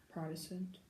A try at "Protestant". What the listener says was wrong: Yes, Protestant. That's right.